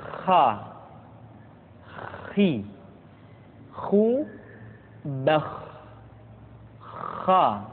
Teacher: Kha dikeluarkan dari pangkal tenggorokan. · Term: huruf kha